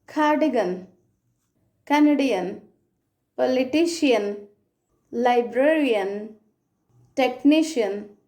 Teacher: ఈ శ్వా సౌండ్ అనేది ఐఏఎన్, ఏఎన్ ఎండింగ్స్తో వచ్చే వర్డ్స్లో కూడా వాడచ్చు